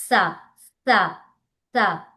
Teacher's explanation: 2 పండ్ల మధ్యలో టంగ్ని బయటకు తీసినాం. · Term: దంత సకారం